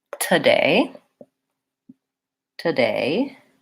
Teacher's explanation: in this word the stress is on the syllable day that has the clear vowel a